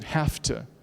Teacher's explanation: when you say have to, that V changes to an F because of the voiceless T coming up. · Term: regressive assimilation